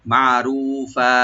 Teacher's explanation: ফার উপরে যে দুই জবর আছে আমরা এখানে থামবো, তো থেমে গেলে এখানে এক আলিফ টেনে আমরা থেমে যাবো, মধ্যে আরজি মধ্যে আওয়াজ হয়ে যাবে।